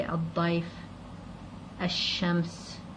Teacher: So you can't hear the lam anymore. · What would happen here is the lam would become silent. It's a sun lam because of this sun letter. It would be dropped when reading, and the sun letter would acquire a shadda on top of it to distinguish it.